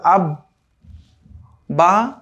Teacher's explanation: তা দেখতে পেলাম আমরা আলহামদুলিল্লাহ এখানে যে আব্বা, আব্বি, আব্বু, এই যে শব্দগুলো, এই যে বাটা 2 বার করে উচ্চারণ হচ্ছে, এটাই হচ্ছে তাসদীদের কাজ। তাসদীদ যেই হরফের উপরে আসবে সেই হরফকে সে 2 বার সাউন্ড দিবে, 2 বার উচ্চারণ করাবে।